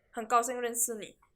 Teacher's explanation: So you would notice there's like the SH there. But when we say it really quick, we just go like 很高兴认识你, and the SH is just gone